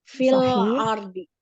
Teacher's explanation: Alif lam komariah, ro-nya dibaca tebal, tafkim.